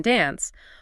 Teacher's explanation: Americans tend towards a short A sound in dance